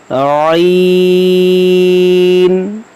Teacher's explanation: عین جو ہے حلق کے درمیان سے ادا ہوتا ہے، نرمی سے اس کو نکالنا ہوتا ہے